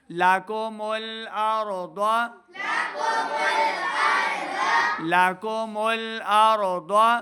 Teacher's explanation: ضاد حروف مستعلیہ سے ہے تو ضاد کو بھی ہم نے موٹی آواز کے ساتھ پڑھنا ہے. ضاد زبر ضاد، ضاد کی آواز کو لمبا نہیں کرنا، صرف موٹا پڑھنا ہے.